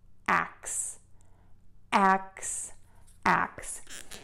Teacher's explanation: we know how to say the ak, and then we're just going to add that s by allowing that air to move out of the mouth. Tip of the tongue is not touching your teeth at all.